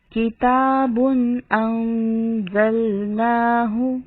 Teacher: کتابن کے تنوین کے بعد حمزہ ہے، آواز حمزہ کی ظاہر ہوگی اور تنوین میں غنہ نہیں ہوگا۔